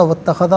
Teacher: اسے اتخذا کی تا کے ساتھ ملائیں گے، درمیان میں سے الف حمزہ کو حذف کیا جائے گا، واتخذا پڑھیں گے۔